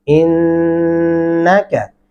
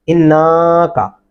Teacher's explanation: الف اور نون کی درمیانی آواز کو ہم ناک کے اندر لے جائیں گے اس کو غنہ کہتے ہیں